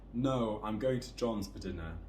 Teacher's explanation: falling intonation because it's a statement